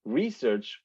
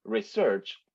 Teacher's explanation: If we say research or research, the vowel after the initial R is not the same in the two words